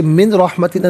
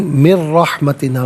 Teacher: नून साकिन के बाद रा है तो नून साकिन को रा के साथ मिलाकर रा की आवाज़ को अदा किया जाएगा। यहाँ यरमलून का कायदा अप्लाई होगा।